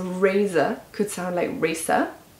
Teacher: You might notice that the Z could sound like S, so razor could sound like racer.